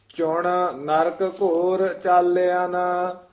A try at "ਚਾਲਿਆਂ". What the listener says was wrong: ਇਹ ਚਾਲੀਆਂ ਨਹੀਂ ਕਹਿਣਾ, ਚਾਲਿਆਂ।